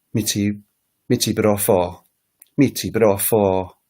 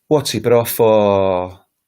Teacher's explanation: So the intonation goes down in asking a question. So when you speak to somebody from Ghana or one of those countries that have the Niger Congo type languages, the questions drop down.